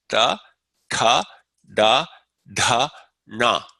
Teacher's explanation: The cerebrals, these are pronounced with the tongue against that alveolar ridge, which is behind the front row of teeth.